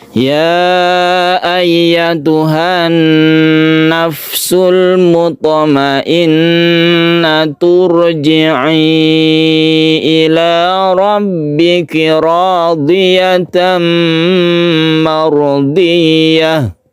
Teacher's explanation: Langsung ke huruf ro ya. Tentunya ro-nya ini menjadi ro yang tebal karena didahului dengan dhammah.